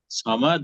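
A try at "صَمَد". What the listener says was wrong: হ্যাঁ একটু লাস্টের দিকে একটু ধাক্কা হবে।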